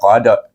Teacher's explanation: baik pertama kita perhatikan huruf Dal huruf Dal adalah huruf Qalqalah huruf Dal adalah huruf Qalqalah kita kena lantunkan bacaannya qad itu kuat bunyinya Tetapi bila kita sambung dengan ha tadi